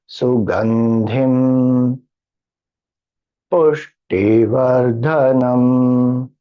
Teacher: Pu goes up, T goes down, Dha goes up.